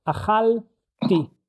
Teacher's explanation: when I pronounce it, I actually create a new syllable. I make this tiny stop, and then I will add the the suffix for I did it, ti.